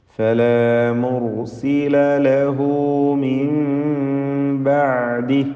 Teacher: സക്കിന നൂനിനെ ഇഖ്ലാബ് ചെയ്ത് സക്കിന മീമിൻ്റെ ശബ്ദം നൽകി മാറ്റി മണിക്കണം